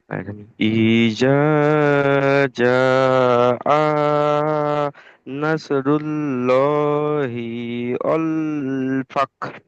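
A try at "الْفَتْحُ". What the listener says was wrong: ফাক নয় ফাত ফাতা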